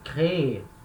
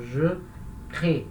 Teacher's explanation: A última sílaba é forte, então eu tenho que falar ela, créer. Quando eu conjugo na primeira pessoa do singular, esse E no final já é fraco, então ele não vai ser pronunciado.